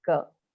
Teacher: when you're saying girl again it's the back of the tongue that is touching the back of the throat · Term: guttural